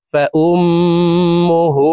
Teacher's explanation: হার উপরে উল্টা পেশ আছে তাই ঠোঁট গোল করে এই হাকে এক আলিফ টেনে পড়ব